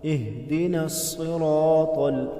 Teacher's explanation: ہا گلے کے اس حصے سے ادا کریں گے جو سینے کی طرف ہے، اهْدِنَا الصِّرَاطَ، صاد حروف مستعلیہ ہے، موٹا کر کے پڑھیں گے، را پر زبر ہے، را کو موٹا پڑھیں گے اور ساتھ میں الف بھی موٹا پڑا جائے گا، الف پچھلے حرف کے تابع ہے، اگر پیچھے حرف موٹا ہے تو الف بھی موٹا پڑھیں گے۔